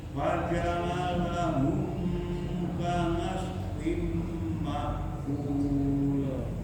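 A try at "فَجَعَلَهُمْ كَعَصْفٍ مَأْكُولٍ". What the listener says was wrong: lagi ya, huruf ain faja'alahum. Kemudian humnya jangan panjang-panjang, langsung disambung. Faja'alahum ka'asfin ma'kul.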